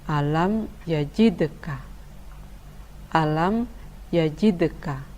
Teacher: Qolqolah Sugro tetap dibaca memantul namun kurang jelas